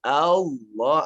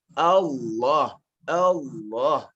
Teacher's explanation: satu-satunya huruf lam di sisi orang Arab yang ditebalkan hanya dengan lafaz Allah ini